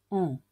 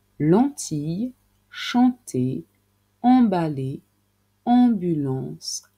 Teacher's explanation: En pour faire le son en, il faut partir de la lettre A. La langue va un petit peu vers l'arrière et on baisse le voile du palais pour laisser passer de l'air par le nez.